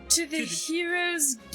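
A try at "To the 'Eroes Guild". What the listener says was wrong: No, you gotta get the. There's no H in a French accent.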